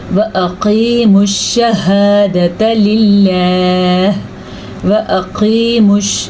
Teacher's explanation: قاف کو پر پڑھنا ہے کیونکہ یہ موٹا قاف ہے، یہ حروف مستعلیہ میں سے ہے۔ حروف مستعلیہ 7 ہیں، یہ وہ حروف ہیں جو ہر صورت میں پر یعنی کہ موٹا کر کے پڑھے جاتے ہیں۔